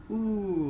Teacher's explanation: say for example if we if we produce this ooh sound you can feel that your tongue is high up okay and it's at the back of your mouth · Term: close